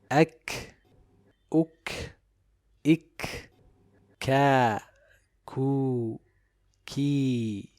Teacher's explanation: The letter kaf is the other letter besides the letter ta that has shiddah and hums. So the sound does not flow, but it is characterized with hums or release of breath. Also, it is always recited with tarqiq.